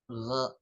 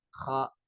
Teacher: Kalau ghain tidak serak, kalau kho itu serak. Ada seraknya sedikit.